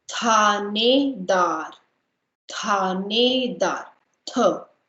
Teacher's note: Tha is again aspirated.